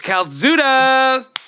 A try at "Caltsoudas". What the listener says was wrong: I feel like you put a Z, like Zudas. No, I'm saying he did it.